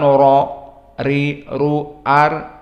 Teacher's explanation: Di saat kita menyebutkan ra, ri, ru, ar, maka lisan kita mendekati kepada bawah, tidak kepada al-hanak al-a'la. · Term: istifal